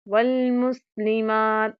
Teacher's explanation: الف مدہ ہے مات میں، اس کو بھی اچھی طرح سے ایک الف کے برابر لمبا کریں گے، قلقلہ نہیں کریں گے، جیسا کہ والمسلمات اس طرح سے ٹھہر کر نہیں پڑھنا، تا کو بہت نرمی کے ساتھ ادا کیجیے گا، پر نہیں کرنا ورنہ تواں والا جو قلقلہ ہے وہ یہاں پر آپ لوگ ایڈ کر دیں گے۔